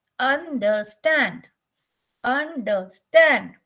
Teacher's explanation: So here the stand part is stressed.